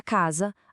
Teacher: na palavra casa, a letra S tem som de Z